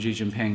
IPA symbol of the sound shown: ʒ